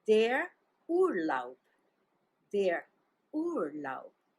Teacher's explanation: U-R-L-A-U-B, and the stress is on the first syllable